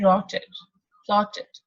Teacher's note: we are saying t, that is voiceless, vowel, and then d